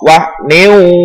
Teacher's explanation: Berikutnya adalah idgham bi gunnah, yaitu karena ada kasroh tain bertemu dengan huruf wawu. Cara membacanya adalah dimasukkan dengan berdengung.